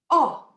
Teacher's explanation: the letter o in spanish is never a long o like it is in english